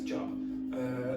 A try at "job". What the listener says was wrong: No, not yob, okay? That actually has a meaning.